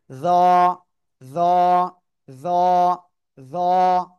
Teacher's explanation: জিহ্বার আগা উপরের দুই দাঁতের আগার সাথে লাগাবেন, লাগিয়ে মোটা আওয়াজে উচ্চারণ করতে হবে।